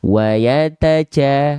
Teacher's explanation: Karena huruf jim punya sifat yang disebut dengan jahar. Ya, jahar itu artinya adalah tertahan nafas. Jadi huruf jim sedikit pun tidak boleh mengeluarkan percikan nafas.